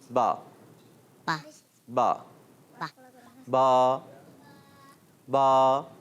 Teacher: دونوں ہونٹوں کے تر حصے سے با ادا ہوتا ہے